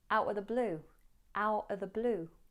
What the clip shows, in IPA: ˈaʊʔə ðə bluː